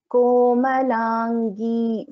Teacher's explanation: So here Komalangi, Ga is an Alpa Prana. Komalangi, so it is not Mahaprana.